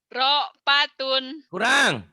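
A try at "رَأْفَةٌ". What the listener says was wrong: Kurang neken. Ra'fatun, ra'fatun, ra'fatun, ra'fatun. Bukan, tapi enggak. Enggak ada yang panjang. Rokpatun, enggak ada yang panjang.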